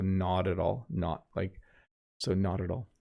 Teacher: Notice how the T, right, becomes the D.